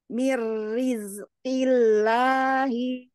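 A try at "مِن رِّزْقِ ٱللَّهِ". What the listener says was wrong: Roknya yuk lebih lebih rebah lagi, lebih istighfar lagi, jangan sampai ujung lidahnya menggulung sampai ke badan lidah. Maksudnya kayak gini, mir, miris, miris. Jadi dia naik dulu, turun lagi, naik dulu, turun lagi gitu ya, nggak nggulung. Miri, miri. Jadi naiknya hanya begini. Ya, kalau ini rongga mulut ya, ini atasnya gusi ya. Dia hanya begini. Miri, miri, bukan begini.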